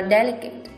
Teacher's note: Câu số 3, ý A đọc là delicate, đuôi ATE làm trọng âm dịch chuyển 3 âm tính từ đuôi lên, do đó delicate trọng âm sẽ rơi vào âm đầu tiên